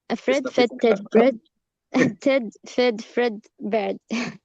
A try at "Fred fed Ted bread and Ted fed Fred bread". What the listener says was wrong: Bread. not bird.